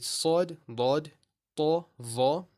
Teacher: Now you can hear the fullness coming out of my mouth as I'm pronouncing these letters. And that fullness is not created by moving the lips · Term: isti'la